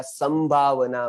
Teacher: तो यहाँ पर संभावना में अनुस्वार का उच्चारण मैंने म किया क्योंकि आगे भ आया